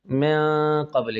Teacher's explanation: یہ غنہ اس میں نرم ہوتا ہے، زبان کی نوک نرمی سے اپنے مخرج میں لگانا ہے اور خیشوم سے یعنی ناک کے بانسے سے آواز نکالنی اور ساتھ ساتھ منہ سے بھی نکالنی ہے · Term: اخفاء مع الغنہ